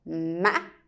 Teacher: it sounds like a broken tone which means while you're going up with a tone you break it in the middle. So my tip is it sounds like you walking but and then you trip. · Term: wavy tone